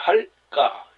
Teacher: 할 뒤에 여린 히읗이 붙어 있으니까 할 가가 아니라 할까 이렇게 소리 난다는 것입니다